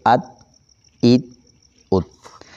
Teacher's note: मुकम्मल तौर पर जबान की नोक ऊपर के दांतों की जड़ में लगकर जुबान वहीं रुक जाए आवाज वहीं बंद हो जाए